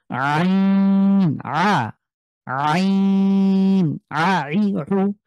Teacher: কণ্ঠে মাঝখানে চাপ দিয়ে উচ্চারণ করছি আমি।